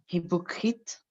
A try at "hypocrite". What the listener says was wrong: D'accord, mais ne dis pas he, il n'y a pas de he. Alors, hypocrite, mais ça commence par H, mais on ne prononce pas le H. Alors, hypocrite.